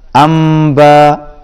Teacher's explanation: نون کے بعد حمزہ ہے، یہاں پر اظہار ہوگا